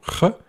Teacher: on force l'air à circuler par l'obstacle qui est créé par la langue contre le palais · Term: fricatives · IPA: [γ]